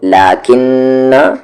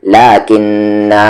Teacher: پڑھنے کی صورت میں الف سائلنٹ ہو جاتا ہے اور رکنے کی صورت میں الف پڑھا جاتا ہے